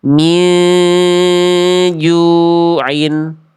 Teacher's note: Jangan dibaca jelas min juin tapi min nunnya an-nya udah enggak udah samar. Samarnya menuju huruf jim tahan dua harakat. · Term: ikhfa hakiki